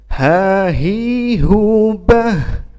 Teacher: dan harus ada semacam nafas yang mengalir karena H itu adalah huruf hams, ya. Hams itu adalah huruf yang ketika berhenti atau ketika wakof atau sukun, ya, maka keluar nafas dari mulut kita, ya.